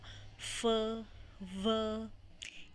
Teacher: आपका अपर टीथ जो है वो लोअर लिप के इनर पार्ट के साथ टच होगा। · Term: लेबियो डेंटल